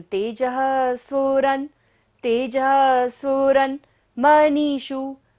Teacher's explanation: विसर्ग है तो सांस का विसर्जन करेंगे, ध्वनि का सारा विसर्जन।